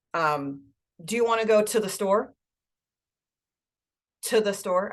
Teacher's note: what we do with the TO is we very much reduce it and we kind of blend it in with the other words that are around it